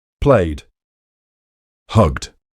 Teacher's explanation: For pronouncing the D sound, you need to say the infinitive fully first, then add a voiced D, like in the word dad.